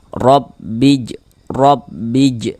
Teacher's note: tebalkan huruf ro-nya sehingga pangkal lidah kita itu naik terangkat ke atas ketika kita mengucapkannya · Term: tabkhim